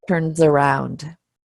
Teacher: the final Z sound that we just talked about z, attaches to the next word